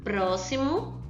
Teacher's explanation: Por isso que ela tá pintada de verde. Próximo, então o pró foi mais forte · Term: proparoxítona